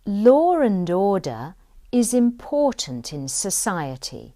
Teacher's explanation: In this sentence, you also have a linking R. Order is. And let's say the sentence again.